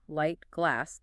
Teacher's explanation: For L, light, glass, the tip of your tongue touches the ridge behind your upper front teeth